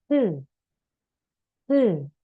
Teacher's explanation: Huruf S itu kita baca He. S-nya agak mendesis seperti ular